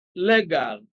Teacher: legal stress is on the first syllable